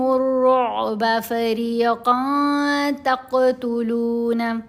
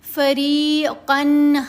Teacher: قن میں نون کی آواز ہے، اس کو ہم نے ناک میں چھپا کر پڑھنا ہے، اخفا کرنا ہے